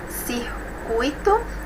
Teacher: Decrescente porque nós temos primeiro a vogal e depois a semivogal. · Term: ditongo oral decrescente